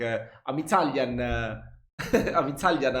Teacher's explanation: I think it's kind of like when us Italians speak in English, you know, we always tend to prolong the sounds, maybe like add a vowel sound at the end of the sentence